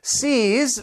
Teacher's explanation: you have that long e and it ends with that z sound